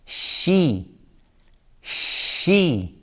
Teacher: Don't make your lips round first to say the letter sheen with kasra. She, this is wrong.